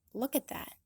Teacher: The preposition at gets really reduced with a schwa and is attached to the word look with a reduced K. That is, a K that doesn't have a full exhale. · notice both of these stop T's at the ends of at and that. So it should sound like look at that.